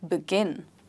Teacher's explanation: The last syllable or the second syllable is stressed.